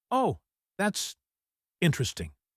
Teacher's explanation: My voice is flat and low. I am bored, but I am trying to be polite.